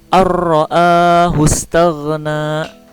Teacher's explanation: Don mati masuk kepada huruf ro. Jadi memasukkan kepada huruf yang di depannya, yaitu huruf idgham bila gunnah. Memasukkan dengan tidak berdengung cara bacanya.